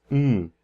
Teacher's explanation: sound it is so a nasal bilabial is something that where your lips are closed and the air goes through your nose